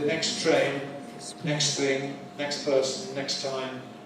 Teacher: Taking out, eliding, removing the T at the end of words like next. When the next word begins with a consonant, then we tend to omit it. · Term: Elide the T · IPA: [ˌneks ˈtreɪn]